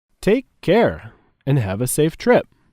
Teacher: Take and care are stressed.